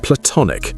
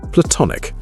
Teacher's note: Platonic with a schwah in the first syllable and the stress on the second.